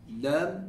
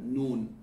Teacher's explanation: Lam, you're flattening your tongue with the lam to be able to touch the hard palate. And I'm behind your teeth, or the gums behind your teeth.